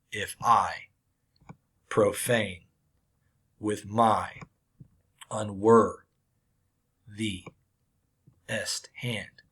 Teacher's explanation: my five pairs of syllables unstressed stressed unstressed stressed